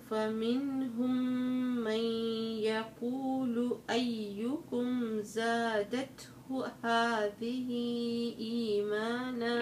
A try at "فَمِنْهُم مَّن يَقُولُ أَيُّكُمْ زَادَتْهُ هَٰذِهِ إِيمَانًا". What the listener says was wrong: عندك برضو المدود الطويلة بتختصريها مش هذه إيمانا.